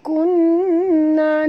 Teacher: nun bertasydid atau nun musyaddah, kena dengung dua harakat